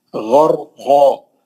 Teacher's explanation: غین مستعلیہ کا ہے، را کو موٹا پڑھنا ہے